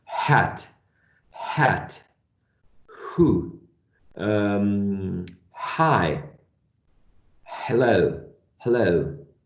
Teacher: only the air goes through the vocal cords and having no vibration.